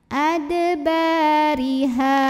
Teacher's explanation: maka bacanya tipis ada bariha jika berhenti di sini hukumnya adalah karena ada Alif sebelumnya didahului baris fathah dibacanya cukup 2 harokat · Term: Mad thobii